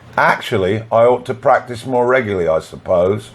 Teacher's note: we add y between I and ought, and we add y between regularly and I